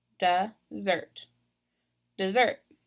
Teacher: So I'm stressing that second syllable.